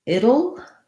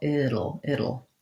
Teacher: It will becomes it'll, and here's where we end up flapping that T.